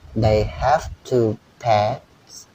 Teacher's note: Ada pet itu juga diledakan ya. P ada T di situ, pets.